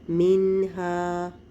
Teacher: آگے دیکھیے یہاں پہ پھر آپ کو لفظ کے درمیان میں نون ساکن مل رہا ہے، اس کے بعد والے لیٹر کو دیکھیں گے، ہا جو کہ حروف حلقی میں سے ہے، یہاں پر بھی اظہار کا قاعدہ ہوگا، نون کو ظاہر کر کے پڑھیں گے